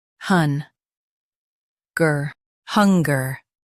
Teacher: Emphasize hun and soften gur.